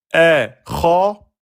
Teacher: la lettre Kha est une lettre emphatique. On la prononce de façon grave.